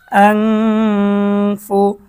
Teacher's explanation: নুন সেকেন্ডের পরে ইকফার হরফ ফা এসেছে গুন্না সহ স্পষ্ট পড়তে হবে